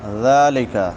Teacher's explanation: ذال نرم حروف میں سے ہے، نرمی سے پڑھیں گے اور اس کے اوپر کھڑی زبر ہے ایک الف کے برابر لمبا کریں گے